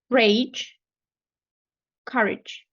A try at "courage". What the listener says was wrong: Beautiful.